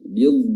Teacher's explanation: Wa yaqbidn, ya, bidn, ya, dotnya dari hafatul lisan, tepi lidah, bertemu dengan gigi geraham